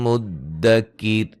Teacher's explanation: را کو باریک پڑھیں گے وقفاً وصلاً. ملانے کی صورت میں نون تنوین کا یہاں ادغام ہوگا.